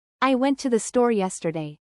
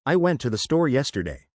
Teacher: The emphasis on yesterday shows that's the important information, the new information.